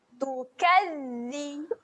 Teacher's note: pada huruf zal terdapat tanda sabdu, tahan jelirkan lidah.